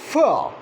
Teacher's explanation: Whenever you say f, you would feel that the air stream is not blocked, but there is a narrow passage and the air has to pass through that narrow passage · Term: fricative